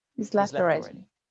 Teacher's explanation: Here, the word he is shortened or removed. So the sentence starts with a very short I vowel linking to a z sound. He's left already.